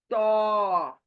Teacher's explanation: जबान सामने के दांतों की जड़ को लगेगी जाकर। सामने के दोनों दांतों की जड़ को लगेगी, तब जाकर क्या अदा होगा, लेकिन जबान मुंह गोल होगा। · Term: मोटा लेटर तो